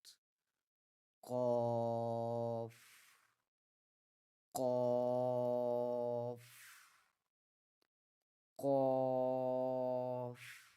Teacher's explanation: When pronouncing the letter Qaf, the back part of the tongue touches the soft palate, which is the soft part at the back of the roof of the mouth.